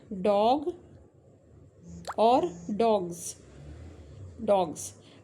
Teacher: अब यह जो जी है यह वॉइस साउंड है। वॉइस्ड क्योंकि इसमें वॉइस आती है। तो फिर यह जो एस है यह भी वॉइस बन जाता है। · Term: एसिमिलेशन